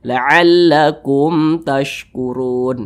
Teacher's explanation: jangan dipanjangkan atau jangan didengungkan itu salah maka dibaca pendek saja jelas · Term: izhar syafawi